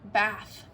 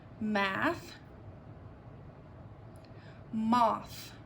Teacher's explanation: when we make this sound our tongue is between our teeth